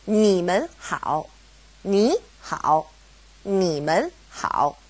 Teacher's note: because we have mun separating ni and hao, they both go back to being third tone